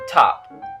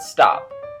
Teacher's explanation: when you say top, there's a little puff of air that accompanies it. But the T in stop doesn't have this. The P might, but the T doesn't.